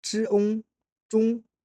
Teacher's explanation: Commencez par un O qui est en réalité prononcé comme un E assez court et profond. Puis élevez immédiatement l'arrière de la langue vers le palais mou pour former le on.